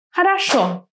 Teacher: Which syllable is stressed? The last one. Хорошо. Now, the syllable that is just next to the stressed O is going to be weaker.